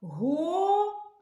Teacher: який звук ми тягнемо голосом звук а наголос